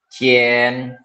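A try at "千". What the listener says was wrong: Enggak, itu kayak nada 1. Cien.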